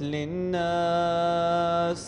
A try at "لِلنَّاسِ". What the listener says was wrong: الغنة في النون للناس الغنة زيدها في كلمة الناس